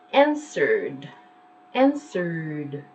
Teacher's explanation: answered is very vibrant it's pronounced as a D